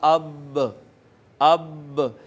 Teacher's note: با جو ہے دونوں ہونٹوں کا جو اندر والا تر حصہ تھا، دونوں ہونٹوں کا تر حصہ ملا ہے، تو یہاں سے با ادا ہوئی ہے